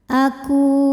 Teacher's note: An aku ku hukum tajwidnya adalah mad tabi'i zahiri sebab ada waw sukun didahului harokat dhammah. Cara membacanya adalah huruf kaf kita panjangkan 2 harokat saja.